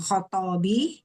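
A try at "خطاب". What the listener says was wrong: Khitab, kha-nya kasrah.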